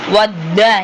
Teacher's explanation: வத்துன்னு சொல்லும்போது ஒரு தால் வருது தன்னு சொல்லும்போது இரண்டு தால் வருது அப்ப ரெண்டு இரட்டிப்பாக ஓதுறோம்